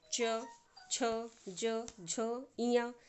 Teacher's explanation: च वर्ग कहाँ से उच्चारित होता है। तालु से।